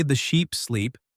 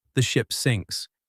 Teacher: you want to elongate the vowel sounds in sheep and sleep, while keeping the vowel sounds in ship and sinks brief